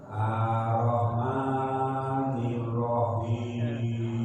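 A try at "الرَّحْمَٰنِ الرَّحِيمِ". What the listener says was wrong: lagi sama R-nya juga ditekan. Ar-Roh. Ya, Ar-Roh.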